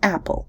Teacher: can be described as Plus open minus back plus syllabic